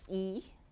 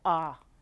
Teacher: how far front it is so we've got some where the height of the tongue is most at the front like e versus at the back where it's ah